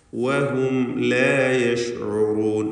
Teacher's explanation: വാവ് 2 ചുണ്ടുകളിൽ നിന്ന് തന്നെ വരണം. ചുണ്ടുകൾ വൃത്താകൃതിയിലാക്കിക്കൊണ്ടാണ് വാവ് ഉച്ചരിക്കേണ്ടത്.